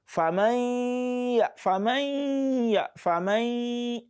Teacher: So that sound, that is the gunna that comes from the nostril. So it is a property of the known.